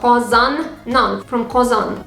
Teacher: Kazan ends with nasal consonant, that's why we add non. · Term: nasal consonants